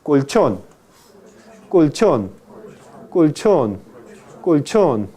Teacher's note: Cuando usted pronuncia colchón, el predorso, no el ápice, sino el predorso de la lengua toca la región alveopalatal